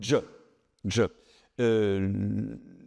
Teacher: un groupe de 2 consonnes, une consonne dentale et une consonne fricative, comme dje. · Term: affriqués